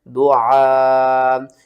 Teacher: اس مد کا نام ہے مد متصل، اس مد کو ہم بڑی مد کہتے ہیں اور اس کو آپ نے 5 الف کے برابر کھینچ کر پڑھنا ہے. اور یہاں سے لے کر یہاں تک آپ نے اپنے سانس کو نہیں توڑنا.